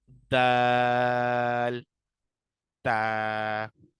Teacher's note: زبان کی نوک اور اوپر کے دانتوں کی جڑ سے ادا ہوتے ہیں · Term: حروف نطعیہ